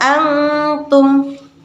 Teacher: nun mati yang dibaca samar atau disebut dengan ikfa, yaitu pada kata antum.